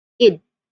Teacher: So what we do here is um if that's the case, we actually add an extra syllable. And the suffix ed is pronounced as id.